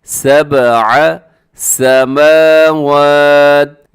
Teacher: اس میں با کو اپنے قلقلہ کرنا ہے کیونکہ با ساکن ہے، حروف قلقلہ میں شامل ہے، اس کی آواز کو ڈبل کرنا ہے